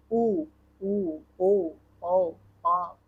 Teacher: अनुनासिक अंग के उच्चारण में ध्वनि वायु ध्वनि मुख के साथ नाक से निकलती है और वृत्ताकार स्वर ऐसे स्वर जिनके उच्चारण में ओठ का आकार गोल हो जाता है। जैसे कि उ ओ औ यह वृत्तकार उच्चारण है।